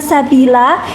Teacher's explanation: fathah tanwin pada akhir kata jika waqaf atau berhenti dibaca mat sehingga harokat tanwin tidak lagi dibunyikan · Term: mat iwad